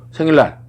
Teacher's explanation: 니은이 리을 뒤에서 리을로 바뀜. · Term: 유음화